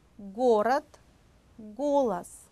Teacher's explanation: 6번 여린 입천장 소리입니다. 입천장 중에서 뒷부분은 만져보시면 말랑말랑합니다. 혀 뿌리를 입천장 뒤쪽에 대면서 내는 소리들이거든요.